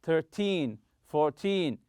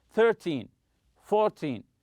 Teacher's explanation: So in teen numbers, when you're talking about quantity, money, or time, stress the teen syllable.